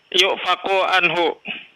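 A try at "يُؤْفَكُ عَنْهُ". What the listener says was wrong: Nah, iya betul.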